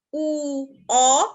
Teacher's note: এরপর আমরা চলো জেনে নেই যে ঠোঁটের আকৃতি অনুযায়ী আমরা এই যে ঠোঁট দিয়ে যে ধ্বনিগুলো উচ্চারণ করছি সেই অনুযায়ী কিন্তু এগুলোর বিভক্তি হয়। যেমন আমাদের ঠোঁটটা যখন গোল হয়ে যায় সেই ধ্বনিগুলো উচ্চারণের সময় সেই সকল ধ্বনিগুলোকে আমরা বলবো গোলাকৃত স্বরধ্বনি। দেখো আমাদের ঠোঁট যখন গোল হয়ে যায় তখন এভাবে ঠোঁট দুটোকে দেখতে লাগে।